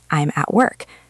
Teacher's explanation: The word at becomes a tiny weak sound. If you're waiting to hear a clear word like at, you will miss it because it has already passed by in a fraction of a second.